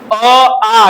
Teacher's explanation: अ आ कहां से आ रहा है? कंठ से आ रहा है ना